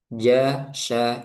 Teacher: lidah bagian tengah menempel dengan langit-langit atas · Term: tengah lidah